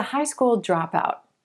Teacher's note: emphasizing the word drop we get drop out and that's a person who leaves before finishing